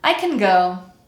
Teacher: in the word can, we cut the vowel sound and we'll hear the word end in n